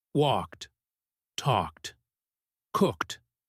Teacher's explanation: they didn't hear the t sound in walked. It is a soft sound. It is a whisper.